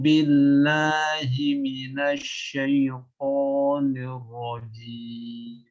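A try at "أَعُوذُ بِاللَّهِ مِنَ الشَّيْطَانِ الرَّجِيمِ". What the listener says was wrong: Perlu catatan untuk huruf jim itu jangan dikeluarkan angin ya. Jangan jim ya.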